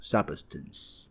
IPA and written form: ˋsʌbstəns (substance)